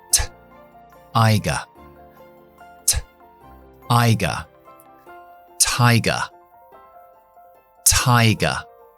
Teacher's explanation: Muy importante que escuchamos este sonido de aire después de la T. · En inglés no, es lo que llamamos alveolar, así que arrastra la lengua un poquito hacia atrás, donde no toca los dientes, solamente la encía detrás de los dientes. Así que sería cogiendo presión y sin voz.